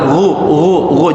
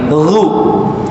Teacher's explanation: Faja'alahu, ya, faja'alahu ghutha, ghain tebal, ghu, jangan gu tapi ghu. Ada ngalir Pak ya suaranya.